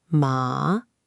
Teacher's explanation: The first tone is high and flat, like a sustained note.